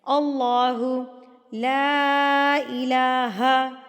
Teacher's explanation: لا کو ہم 3 حرکات کے برابر کھینچ کے پڑھیں گے